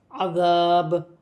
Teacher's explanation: عذاب، وف کی صورت میں دو زیر کی تنوین گر جائے گی اور با ساکن ہو جائے گی۔ با میں بھی وف کی صورت میں قلقلہ پیدا ہوگا